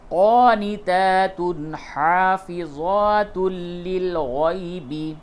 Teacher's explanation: تنوین کے بعد ہا ہے، یہاں پہ اظہار کریں گے، بالکل غنہ وغیرہ نہیں ہوگا · اور اس جگہ پہ تنوین کے بعد لام ہے، ادغام ہوگا، لیکن ادغام بلا غنہ کے ہوگا